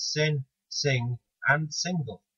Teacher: There really is no actual g sound at the end of sing, but it still sounds noticeably different from sin, and certainly lacks the definite g sound in the very similarly spelled single. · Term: engma